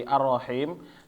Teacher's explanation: lamnya ini kita nggak baca sama sekali karena dia langsung masuk ke ro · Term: idgham kamil